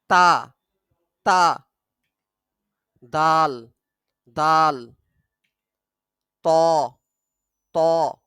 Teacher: কণ্ঠনালীর শেষ ভাগ থেকে মোট করে উচ্চারিত হয় তা দাল ত জিহবার আগা সামনের উপরের দুই দাঁতের গোড়ার সাথে লাগিয়ে উচ্চারিত হয়